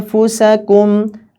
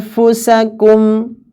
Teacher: kalau membaca ikhfa yang fa itu bibir bagian depan itu diangkat. Anfusakum, mendekati makhrajnya huruf fa.